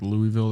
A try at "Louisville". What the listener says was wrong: Louisville. don't say the S. Louisville. Louisville.